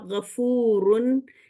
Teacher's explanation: ये फू लंबा हुआ और फिर र गफूरून ये फूलुन के वजन पर है